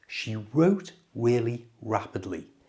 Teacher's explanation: Notice here, the word wrote starts with a W, a W sound. And when a W is in front of an R, the W is not pronounced, it's silence.